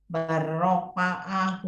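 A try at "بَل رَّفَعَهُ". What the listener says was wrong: Roknya jangan cepat-cepat. Barrofa'ahu. Rofa'ahu. Nah, nggak kerasa tuh kalau kita lafalkan tadi. Barrofa'ahu. Nambah huruf ternyata. Barrofa'ahu. Maka hati-hati. Jangan sampai panjang pendeknya keliru. Jadi mana nambah huruf? Barrofa'ahu. Nah, jadi temponya harus disamakan ya. Jadi jangan rofa'ahu. Barrofa'ahu. Di satu link.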